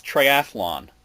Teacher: There's no extra vowel in there.